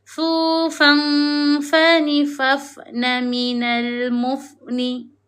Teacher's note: Bila tanwin bertemu dengan fa, hukumnya adalah ikhfa hakiki. Kita kena dengungkan bacaan dua harakat.